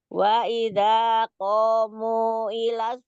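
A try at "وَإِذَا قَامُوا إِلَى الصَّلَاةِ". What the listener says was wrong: Panjangin munya. Munya panjang. 4.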